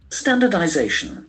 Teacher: The accent falls on the fourth syllable.